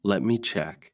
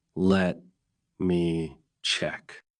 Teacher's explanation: With a small pause and a rising tone, it sounds calm, helpful, and polite. Tone is the feeling in your voice.